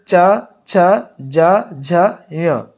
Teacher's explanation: च वर्ग का उच्चारण स्थल क्या है तालू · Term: तालवी वर्ग